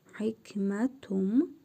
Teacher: İqlab qaydasına görə tənvindəki nun hərfini mim hərfi kimi tələffüz edirik.